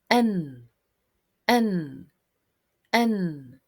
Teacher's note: produced by the contact between the narrow tip of the tongue and the alveolar ridge, which is the bony ridge behind the upper front teeth. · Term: nun